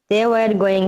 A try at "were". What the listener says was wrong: এটা কিন্তু ওয়ার না, ওয়ার বললে হবে না।